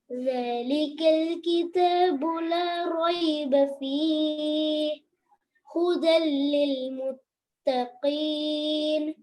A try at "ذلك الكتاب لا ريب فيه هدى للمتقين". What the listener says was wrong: Here, la roiba fi, when you stop, as I've told, ha with sukun, you have to make it clear.